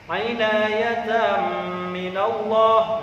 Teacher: Nah, itu ada fathah tanwin bertemu dengan huruf mim. Maka harus dibaca idgham bi gunnah, berdengung.